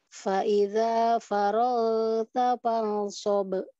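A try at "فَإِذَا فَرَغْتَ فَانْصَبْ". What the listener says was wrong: Faragta, jangan farag, tapi faragta.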